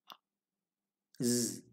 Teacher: the tip of the tongue almost touches the rear of the upper teeth this is the position for z of english and as we say z a little layer escapes making that